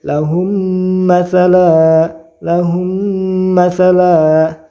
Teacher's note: Idgham itu memasukkan, mislain itu 2 mim ya, memasukkan mim 1 kepada mim 2, dibaca dengung. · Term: idgham mimi